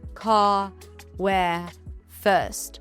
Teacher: in some dialects of English, this R is not pronounced, [music] just the vowel.